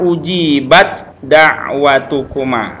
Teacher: Tempat keluarnya hurufnya sama dari ujung lidah atau punggung lidah dengan gigi atas ya. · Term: idgham mutajanisain